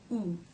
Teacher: of the tongue stretches up towards the soft pallet ooh ooh the front part of the tongue remains down lightly touching or just behind the bottom front teeth ooh and I'm sure you can see the lips round ooh